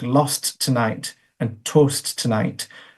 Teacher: You'll also have heard a couple of places there in phrases like lost tonight and toast tonight, both T's there where they come up against each other being released and then rearticulated. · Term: articulated T